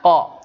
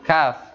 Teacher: ko ada di pangkal lidah bersama kaf, hanya saja ko lebih di belakang. Kafnya agak maju ke depan.